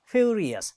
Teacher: it has 3 syllables, and the first one is stressed. Furious. See there, ri, this second, us, o-u-s, us.